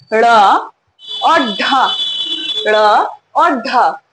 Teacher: ड़ और ढ उच्चारण देखेंगे तो झटके से उच्चारण होता है। ड़ और ढ, इन दोनों वर्णों में आप देखें तो उच्छिष्ट का जो शाब्दिक अर्थ है उसे हम समझ लेते हैं कि क्या है, ऊपर फेंकना।